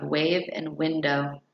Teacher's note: The w sound is a voiced glide sound.